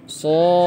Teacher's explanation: Huruf Shad ini terakhirnya ada huruf dal mati ya. Terakhirnya ada huruf dal mati. Maka huruf dal tersebut karena sifatnya qalqalah maka kita pantulkan ya.